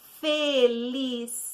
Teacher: felicidade é uma palavra que tem 5 sílabas. Porém, a que tem mais ênfase é a penúltima. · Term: paroxítona